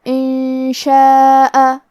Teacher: کلمت ان میں نون ساکن ہے، پھر حرف شین ہے. کلمت شاء، شین حروف الاخفاء میں سے ہے، تو ہم یہ حکم کو غنہ کے ساتھ ادا کریں گے